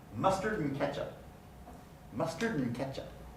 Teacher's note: the n undergoes place assimilation after the d has been deleted because it becomes adjacent to a following voiceless dealer stock so